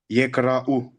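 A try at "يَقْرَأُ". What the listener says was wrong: Attention, on n'entend pas si bien le qaf. Yaqra'u. Yaqra'u.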